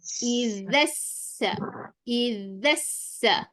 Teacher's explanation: zal, dilembut sikit, bunyi macam pelat sikit, tak dengar sebutan huruf zai.